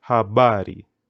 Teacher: if a word has more than two syllables like this word habari put the emphasis nearly to the second or the second to the last syllable